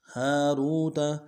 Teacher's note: ہا کے ساتھ الف مدہ ہے ایک انداز میں کھینچیں گے، ہا کو نرم سے ادا کریں گے. را کو واو کے ساتھ ملانا ہے، را کو موٹا کرتے واو کے ساتھ واو مدہ ایک انداز میں کھینچیں گے، تا کو نرم سے ادا کریں گے.